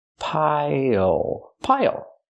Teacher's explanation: Pronunciation, not pile, but pile. Use the dark L at the end. It changes the vowel.